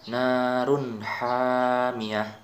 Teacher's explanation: Jadi tanwin bertemu dengan ha, itu cara membacaannya harus jelas. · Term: idhar halki